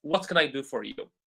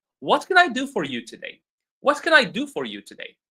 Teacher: It should be a question meaning the intonation should go up.